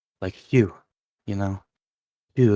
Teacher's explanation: the best sound for it, if you're familiar, is the voiceless bilabial fricative, which is basically making an F. If you know how to make an F, it's putting your teeth to your lips and blowing. · And the way I do VH is a lot like that, but instead of touching your teeth to your lips, you just put your lips close together and blow